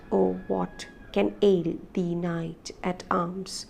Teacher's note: oh what unstressed followed by the stressed syllable and then again an unstressed followed by stressed unstressed stressed unstressed stress